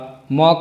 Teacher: म का उच्चारण स्थान ओष्ठ नासिका